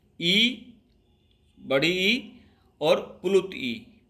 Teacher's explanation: तालु से उच्चारित होने वाले वर्ण ई, बड़ी ई और प्लुत ई